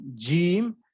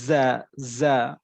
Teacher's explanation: জিম শক্ত মজবুত আওয়াজে যেমন জিম, আর যা ওই যে পাখির মতো ফিস ফিস আওয়াজ করে